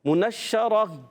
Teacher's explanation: نون کو شین سے ملانا ہے, شین مشدد ہے, ذرا رک کر ادا کریں گے